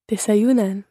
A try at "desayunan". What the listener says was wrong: And good, because you got all the stress right in each one of those.